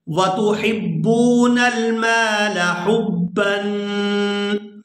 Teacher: یہاں با کے اوپر تنوین ہے، اخفا کریں گے، آواز ناک کے اندر جائے گی